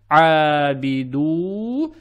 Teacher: Мы расширяем дамму на два такта. Из-за буквы «waw» без диакритических знаков. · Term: madd tabi'i